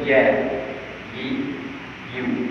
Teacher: bila kita sebut Ya, ada rongga yang terbuka antara lidah dengan lelangit itu, ada terbuka sikit, menghasilkan angin yang keluar sedikit. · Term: huruf Ya